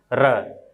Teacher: र वर्ड का उच्चारण जब हम करते हैं तो हमारी जिह्वा 2 या 3 बार कंपन करती है। इसे प्रकंपित वर्ड कहते हैं। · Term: प्रकंपित व्यंजन